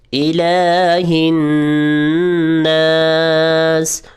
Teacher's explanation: لام کھڑی زبر کی وجہ سے لمبا ہوگا، الہ الناس، اور نون کے اوپر غنہ ہوگا۔